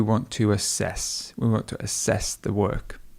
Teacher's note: to assess something, the stress would go on the E.